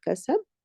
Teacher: Only if I stop at kasab, if I stop at the word kasab, then I will do a qalqala wusta. So here, qalqala wusta is happening because I'm stopping.